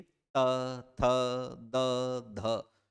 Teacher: अब आप त, थ, द, ध जैसे वर्णों का उच्चारण करके देखिए, तो आपके दोनों दांतों के बीच में जीवा आ रही है, यानी कि दांत जो है वो जीवा को काट रहे हैं। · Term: दंत स्थान